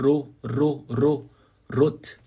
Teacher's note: Rot vibra a ponta da língua ó ro ro ro Rot fão que ter essa armonia né